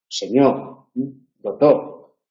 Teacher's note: La R, por ejemplo, también puede aparecer, pero en muchos dialectos, en casi todos los meridionales, desaparece.